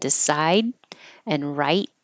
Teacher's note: you won't hear those final D's and T's